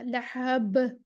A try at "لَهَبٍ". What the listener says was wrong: لہب. اور لا کو موٹا نہیں کرنا، لام کے مرقع کرنا، لام کی آواز باریک کرنی ہے. لا، لا، لا. لام موٹا صرف تب ہوگا، اللہ کا لام موٹا ہوگا اس وقت جب اللہ کے لام سے پہلے زبر یا پیش ہوگا، بس.